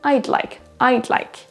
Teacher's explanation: Le pronom je, I, va être vraiment raccourci, réduit. On va à peine l'entendre.